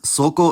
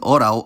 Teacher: L's in coda position, at the end of a word or syllable, became rounded vowels, and if their preceding vowel was already rounded, they just merge into it